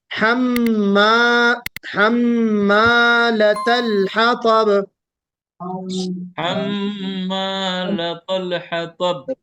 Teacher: میم کو کھینچنا ہے، میم کے بعد الف ہے